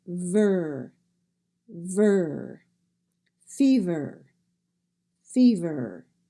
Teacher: When you have a V-E-R at the end of the word, you don't say the E sound or eh. You say the V and ver, ver.